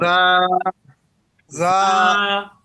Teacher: জিহ্বার আগা সামনের নিচের দুই দাঁতের আগার সঙ্গে লাগিয়ে উচ্চারিত হয়।